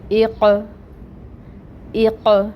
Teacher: یہاں پر اب ہم نے حمزہ کے نیچے کسرہ پڑھی 1 کاؤنٹ کے برابر، اور قوف حروف مستعلیہ میں سے ہے، اس کو پر پڑھنا ہے، موٹا کر کے ادا کریں گے، اور یہ قوف یہاں پر ساکن ہے تو یہ حروف قلقلہ میں سے ہے، اس کے اوپر قلقلہ ہوگا۔ یعنی آواز پلٹ کر آئے گی